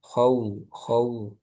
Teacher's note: wau sukun ini bunyinya ke u ya